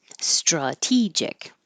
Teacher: the a changes to uh because it's no longer stressed